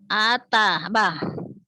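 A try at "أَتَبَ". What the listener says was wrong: Ataba, bagus.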